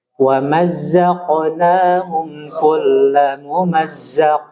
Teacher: Contoh misal nih, konsentrasi di qalqalah ya. Jadi huruf qaf, jadi dia qalqalahnya itu tafkhim ya.